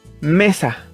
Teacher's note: El acento está en me. Por lo tanto, me es la sílaba tónica y sa es la sílaba átona.